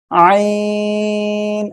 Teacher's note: ওকে, দেখেন আমি অক্ষরটা কিভাবে উচ্চারণ করতে হবে আবার একটু বলি। এই যে গলা, গলার মধ্যখান থেকে আমরা উচ্চারণ করব একটু গলাটা চেপে